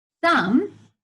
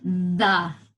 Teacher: you're pushing air through your mouth with your tongue between your teeth